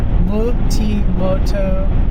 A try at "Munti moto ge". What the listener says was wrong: You said moto like a question mark again.